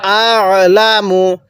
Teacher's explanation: এই আইনটা উচ্চারণের সময় গলার মধ্যে চাপ দিয়ে পড়বো